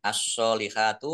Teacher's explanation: alif lam sansiyah, karena tidak dibaca langsung masuk ke huruf berikutnya yaitu shot. Ditandai shotnya ada tasdidnya.